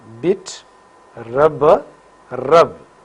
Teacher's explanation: So, the air from lungs compressed behind this closure for some time, and because of the sudden separation of these two articulators, that is upper lip and lower lip, the air escapes with force and we have p, b. Nasal passage is closed. Vocal cords vibrate for b. So, p is voiceless bilabial plosive while b is voiced bilabial plosive.